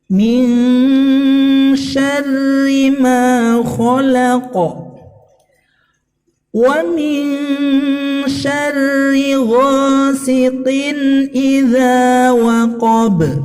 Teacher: Dan pada kalimat ghasiqin, ini adalah mat tabi'i zahiri ya, panjangnya 2 harokat.